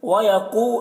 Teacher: قاف کو پر پڑھیں گے، حروف مستعلیہ میں سے ہے